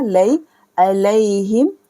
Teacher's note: यहाँ पर हमें गैरिल मग़दूबी अलैहिम, या साकिन से पहले ज़बर है तो या लीन होगा